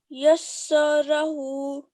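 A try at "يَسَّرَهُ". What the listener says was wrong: Okay, just prolonging the ha a bit. more than 1 second. So for 2 seconds. Yassarahu.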